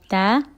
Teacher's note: تا زبان کے نوک سامنے کے دانتوں کو جڑ میں لگانے سے تا ادا ہوتا ہے. تا پر پیش ہے نہیں کھینچیں گے.